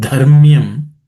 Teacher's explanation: The word dharmyam, the first letter dha is aspirated.